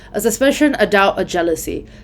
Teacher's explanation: suspicion doubt and jealousy are the stressed ones